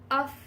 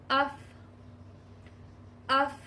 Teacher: آپ کے جو سامنے کے اوپر والے دانت ہیں وہ نیچے والے ہونٹ کے تر حصے پر لگیں گے